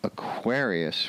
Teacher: Aquarius where the accent is on the second syllable